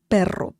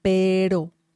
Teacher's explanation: So there's like two different sounds of the letter R in Spanish. There's the one that you really have to roll your tongue, the letter r. And also there's another one that is a bit softer.